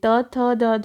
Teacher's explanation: दांतों की मदद से बोले जाने वाले वर्ण दंतव्य कहलाते हैं